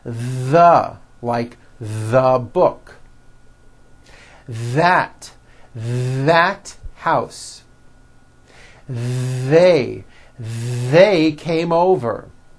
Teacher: they should all be voiced and all made with your tongue coming through your teeth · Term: voiced TH